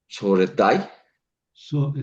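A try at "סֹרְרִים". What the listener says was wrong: Son dos Resh. Sorerai.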